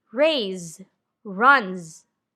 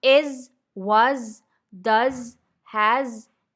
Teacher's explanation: a final s sounds like the letter z z when it follows a voiced consonant or a vowel